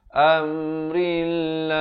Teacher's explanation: Dan lafz jalalah di sini dibaca nipis. Jangan baca amrillah.